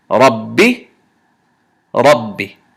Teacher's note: this ba sukun, ba sakin, that is occurring in this shadda, we do not do qalqala on this ba sukun. So this is Ra fatha ba shadda Rab.